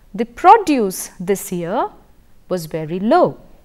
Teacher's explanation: the first sentence the use of the word was a noun it was a noun and therefore the stress was on the initial syllable